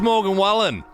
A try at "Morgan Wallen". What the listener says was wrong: You said Wallen how it's spelt, but it's Morgan Wallen.